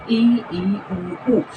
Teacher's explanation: कहते हैं उच्चारण में मुख द्वार लगभग बंद ही रहता है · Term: संवर्त स्वर